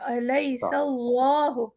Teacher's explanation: لا اللہ یہاں پر موٹا ہوگا کیونکہ سین کے اوپر زبر ہے. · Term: حرف جلال